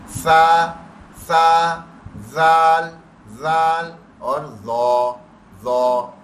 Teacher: 3 حروف نرمی سے زبان کی نوک سے دانتوں کو ٹچ کر کے ادا کرنے ہوتے ہیں